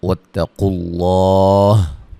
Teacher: قاف کو موٹا ادا کریں گے، تا کو باریک پڑھیں گے، لفظ اللہ کے لام کو بھی موٹا ادا کریں گے